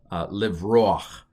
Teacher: This is called a furtive patak, because to get from the O to the k, you've got to stick a little A sound in there